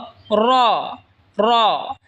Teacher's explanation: জিহবার আগার পিঠ তার বরাবার উপরে তালের সঙ্গে লাগায় উচ্চারণ হবে র